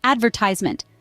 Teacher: she sound like shell another fascinating example is the word advertisement in American English the emphasis is on the second syllable ver pronounced as advertisement however in British English the stress falls on the third syllable